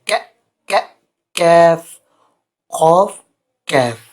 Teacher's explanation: قاف کے مخرج کے ساتھ ہی منہ کی جانب ذرا نیچے ہٹ کر اسے کیف ادا ہوتا ہے